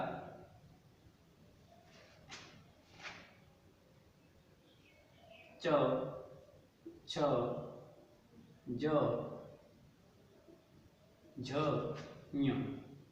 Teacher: इसका उच्चारण स्थान तालु है, और इस कारण से इसको तालव्य व्यंजन कहते हैं।